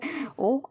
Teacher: कंठ स्वर कंठोष्ठ, यानी कंठ से और ओष्ठ से बोलने वाले स्वर